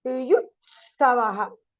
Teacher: the first T alone becomes double.